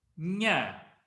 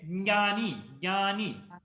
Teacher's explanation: when you say nya, jnani, you don't hear the ja itself. And we say there is a jakara here.